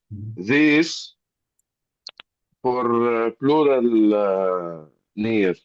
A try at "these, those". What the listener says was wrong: Because here the S is not S, it is Z. These, and we have long E, and those. Those, we have long O.